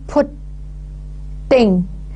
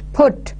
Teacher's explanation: I am paying more stress on the first syllable, that is putting. Ting is not stressed.